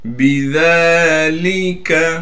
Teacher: ذال پر کڑا زبر آنے کی وجہ سے ذال کو ایک الف کی مقدار کھینچیں گے